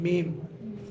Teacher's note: मीम, ऊपर और नीचे के दोनों होंठ जब मिल जाते हैं तो मीम अदा होता है।